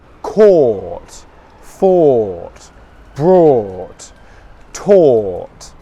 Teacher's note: My lips are rounded. Or. The sound comes from the back of my mouth, or. That would be compared to where it comes from the front of my mouth, or. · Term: long English vowel sound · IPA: /ɔː/